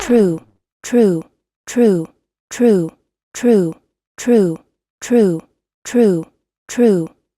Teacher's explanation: here is about pronunciation of TR R in the word true when T and R sounds spelled together a CH sound is added into the pronunciation